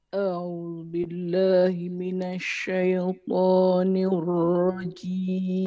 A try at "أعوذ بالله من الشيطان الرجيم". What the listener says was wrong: Tinggi sangat tu, rendah sikit. Rendah sikit, tinggi sangat tu.